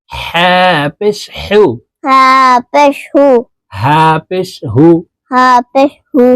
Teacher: এই হার উচ্চারণ হলকের মধ্যখান থেকে হবে